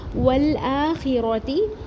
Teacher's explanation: واو کا زبر لام ساکن سے ملا کے پڑھیں گے اور لام ساکن ہلے گا نہیں، حمزہ کے اوپر کھڑا زبر ایک الف برابر پڑھیں گے.